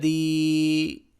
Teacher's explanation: یا ساکن سے پہلے زیر آ جائے تو مدہ ہوتا ہے، یہاں پر مدہ ہو رہا ہے، یعنی کہ ایک الف کے برابر اس کو کھینچ کے پڑھنا ہے